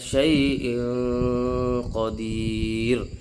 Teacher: اسی طریقے سے تنوین کی مثال شیء قدیر، اس میں بھی جو ہے ادغام نہیں ہو رہا، تنوین ہے، تنوین پر غنہ ہو رہا ہے، بغیر ادغام کے ہو رہا ہے، اور اس کے بعد جو ہے اخفا کا حرف آ رہا ہے، موٹا قاف۔